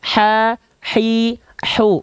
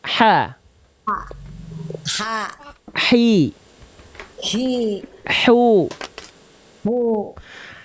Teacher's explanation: ha kecil nafasnya berbisik dari tengah tenggorokan